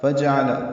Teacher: عین وسط حلق سے ادا ہوگا